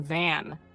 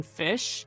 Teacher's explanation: The V sound is voiced. The F sound is unvoiced.